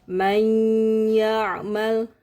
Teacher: Artinya, nun di sini nun mati. Nun mati itu tidak terdengar lagi. Yang terdengar adalah huruf idghamnya.